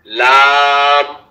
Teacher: 8 number মাখরাজ, জিহ্বার আগা থেকে একটু আগে বাড়াইয়া তার বরাবর উপরের তালুর সঙ্গে লাগাইয়া লাম